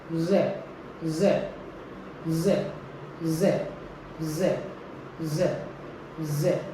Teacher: The middle of the tongue is raised towards the palate while the tip stays behind lower teeth. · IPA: /j/